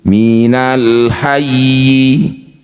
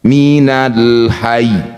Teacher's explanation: Ini kasrah berbunyi minal hayyi. Ketika dihentikan tinggal ditekannya saja kasrahnya tidak usah dibunyikan.